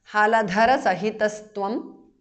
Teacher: Visarga changes to su there